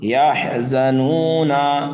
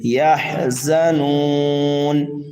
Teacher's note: ولا ہم، یا حا زبر یا، زا زبر زا، یا حزا، نون واو پیش نو، یا حزنو، نون زبر نا، یا حزنونا، زا کو ہم سیٹی کی آواز دے کر کے پڑھیں گے اور سختی کے ساتھ پڑھیں گے، یحزنون، تو ہم نون کو جو ہے ساکن کر دیں گے، اور یہاں پر جب وقف کریں گے تو وقف بالاسکان ہوگا، اور مد جو ہوگا وہ مد عارض ہوگا۔